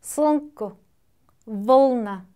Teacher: 자음이 너무 합쳐져 있어요. 그럴 때 자음이 모음의 역할을 하기 때문에 이런 경우는 성절 자음이다.